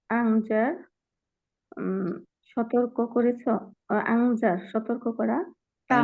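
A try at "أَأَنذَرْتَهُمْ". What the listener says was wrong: আংজারতা আংজারতা আংজারতা বারবিটা তাহুম না, আংজারতা হুম হলো আলাদা।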